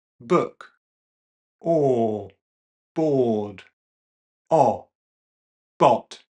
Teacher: we'll notice the lips rounding a bit as we go to the back. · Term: back vowels